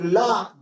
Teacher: जब ला बोलते हैं तो ला जीभ हमारी ऊपर तलवे को छू जाती है